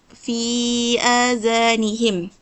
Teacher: Cara bacaan dia bacaan dipanjangkan dua harakat sahaja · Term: mad badal